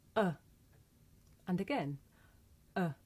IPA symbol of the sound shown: ə